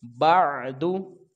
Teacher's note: با کو عین کے ساتھ, اس کو غیر قلقلہ ہے, عین کی آواز کا خیال رکھنا ہے. دال کے اوپر پیش ہے, اس کو جلدی ادا کریں گے